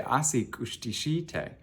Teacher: But if you want to say is the man eating, you say asi kushtishite, and you hear a slight rise, but then a fall at the end